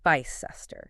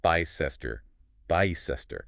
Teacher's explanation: If you know the rule from Gloucester, you can immediately apply it to Bicester. The only trap here is that initial I, where we instinctively want to read it like bike or pie, but it's a short vowel, like in kiss.